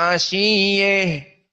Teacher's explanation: Jika kita wakaf padanya menjadi ha ashiyeh. Dan qiraah dari Al-Kisai ha utaknis dibaca dengan al-imalah al-kubra.